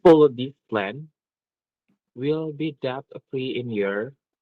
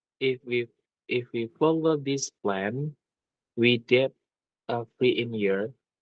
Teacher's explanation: your intonation at the end it sounds like it's rising so maybe you can try again with falling